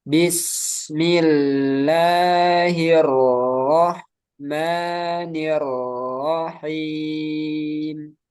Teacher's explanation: Bismillahirrahmanirrahim kurang lama sedikit rnya H hir jangan keburuk H tapi hir sukunnya itu agak lama